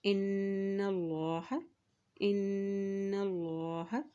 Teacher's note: اللہ کے نام سے پہلے زبر آ گیا تو اللہ کا نام بھی یہاں پر موٹا ادا کیا جائے گا